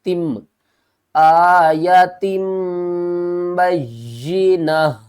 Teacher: نون کی آواز کو میم کی آواز میں بدل کر پڑھیں گے